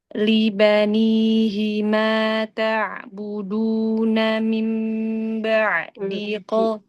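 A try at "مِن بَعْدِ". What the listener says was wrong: Ulang lagi, mim gunanya panjangin. Mim ba'di.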